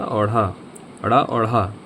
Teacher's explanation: मुंह का जो तालु होता है उसको टच करके अचानक से जीभ नीचे आ जाती है। तब इसका उच्चारण हम लोग कर पाते हैं। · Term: उत्क्षििप्त व्यंजन